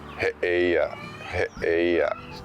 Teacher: If you get two of the same vowels in Hawaiian, you'll hear a guttural break.